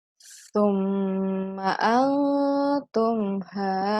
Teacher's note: ada mim bertasydid di sini, ditahan sedikit ya.